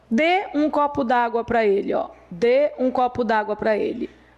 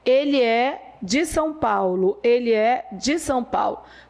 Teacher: Quando eu digo que ele é de São Paulo, a pronúncia é como se fosse um i pequenininho. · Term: átono